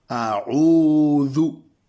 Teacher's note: Vous voyez le ou qui est un peu grave, c'est comme le OU, mais on a mis une apostrophe dans la translittération pour rappeler que c'est grave dans la bouche, dans la gorge au fait plutôt, quand on le sort. Et ça doit être long.